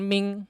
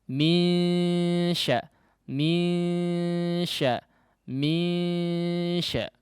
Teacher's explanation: masih ada udara dari jauh yang keluar ya, meskipun khaysyumnya juga ikut berpartisipasi karena memang ada nun yang disamarkan. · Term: ikhfa'nya